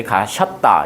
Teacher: 할머니께서 가시었다 해도 되는데 가셨다 이렇게 하는 것도 이어가 여로 바뀐 꼴이죠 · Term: 축약